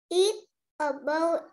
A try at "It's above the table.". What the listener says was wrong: À, hay bị mất âm gió nhá.